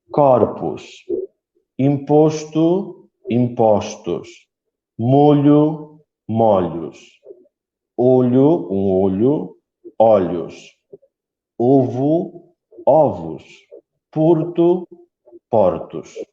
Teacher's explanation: o ou fechado em singular em forma circular ou os antigo muda para o aberto em plural